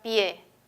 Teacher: la que suena más es la e la y casi no suena · primero aparece la vocal cerrada y luego la vocal abierta en los dos casos la que suena más es la e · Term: diptongo